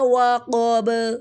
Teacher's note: وَمِن شَرِّ غَاسِقٍ اِذَا وَقَبَ. قاف پورے حروف میں سے اور با کو ساکن وقف کی صورت میں ساکن دیں گے اور کلکلا ہوگا